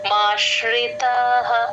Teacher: వినిపించాలి ష్ అని మాశ్రితాః ష కింద రకారం కూడా క్లియర్ గా వినిపించాలి. మా కి ష ని జాయిన్ చేస్తే ఆ ష కింద రకారం కూడా మీకు క్లియర్ గా వినిపిస్తుంది.